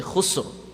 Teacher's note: You say khusr. That ra will be read full mouth.